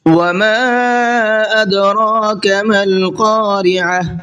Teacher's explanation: وما کے میم کو تھوڑا سا زیادہ کھینچنا ہے اس لیے کہ یہاں پر چھوٹا مد بنا ہوا ہے